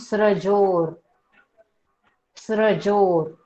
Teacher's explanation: फक्त र चा उच्चार आहे, स्र स्र, स्त्र नाही, त कुठेच दिसत नाहीये तिथे, म्हणून स्रजोर स्रजोर।